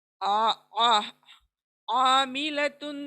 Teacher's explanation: आइन का ध्यान रखते हुए पढ़ें, बीच में से आएंगे आवाज हलक के।